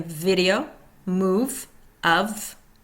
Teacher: F, unvoiced. Top teeth on lower lip, continuous airflow with friction. Heard in fire, laugh, phone.